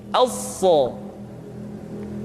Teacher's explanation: sama seperti Huruf Sin dan huruf Za yaitu lidah berada diantara dua gigi seri [Musik] untuk memudahkan pengucapan huruf sa perhatikan sifat assofir yang dimiliki